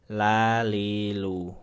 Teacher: semua huruf lam dibaca tipis